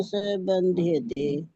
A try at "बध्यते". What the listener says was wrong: ये बंध्यते नहीं है, बध्यते, बध्यते।